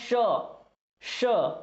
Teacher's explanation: जो मुंह से जो हवा आती है वो क्या होता है, रगड़ खाकर बाहर निकलती है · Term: उष्म व्यंजन